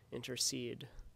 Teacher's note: a foot with three syllables altogether which a stressed syllable is preceded by two unstressed syllables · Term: anapest